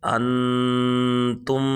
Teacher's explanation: تا حروف اخفاء میں سے ہے، یہاں پر اخفاء ہوگا، غنہ کریں گے